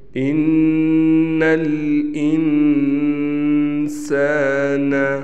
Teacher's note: کیوں غنہ ہوگا؟ اس لیے کہ یہاں پر نون مشدد ہے، ہم نے ایک الف کے برابر غنہ کرنا ہے۔ غنہ کیا ہوتا ہے؟ غنہ ناک میں آواز لے جانے کو غنہ کہتے ہیں۔